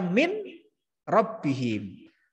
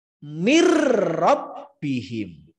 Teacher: Cara membacanya adalah lebur, tidak dengung. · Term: idgham bila guna